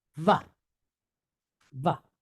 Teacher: So we got a V sound from the wa, and we have this patach, short A.